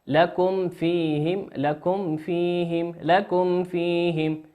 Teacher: الميم في كلمة لكم هي ميم ساكنة أتى بعد حرف الفاء، والفاء من حروف الإظهار